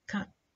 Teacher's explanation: ta, when it occurs finally, it's not released audibly. Cut. Notice, cut, because it's finally, وفيش بعدها, there is nothing, يعني after this ta, So the puff of air is not released هنا.